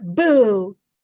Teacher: we really want to try to keep the b with the vowel boo and then pull away the final consonant